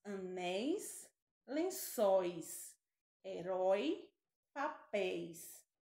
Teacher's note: que é um ditongo são sons vocálicos pronunciados na mesma sílaba então nós temos os ditongos abertos em oi